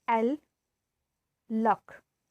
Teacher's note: place of tip of the tongue at the alveolar ridge. This is alveolar.